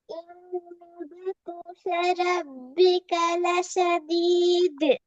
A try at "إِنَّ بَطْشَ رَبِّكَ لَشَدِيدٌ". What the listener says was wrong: பிழை. பிழை. லஷத்தீத் அந்த நிப்பாட்டுறது பிழை. லஷதீது எத்தனை செகண்ட் நீட்டி ஓதணும், ஏன் நீட்டி ஓதணும்? ஆ, எத்தனை செகண்ட் நீட்டி ஓதணும், ஏன் நீட்டணும்? அப்போ மதுரை அடையாளம் வந்த எல்லா இடத்துலையுமே 2 அல்லது 3 செகண்ட் நீட்டுரும், அப்படியா?